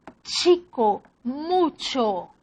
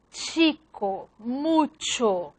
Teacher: Ya la alveolo-palatar sorda, chico, mucho, no hay la explosión, no hay una explosión tan grande como P y B